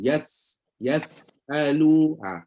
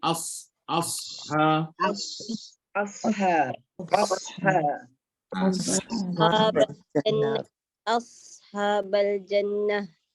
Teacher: selain daripada hams selain daripada rakhawah panjangkan bunyi dia alirkan bunyi dia tambah satu lagi iaitulah sifat safir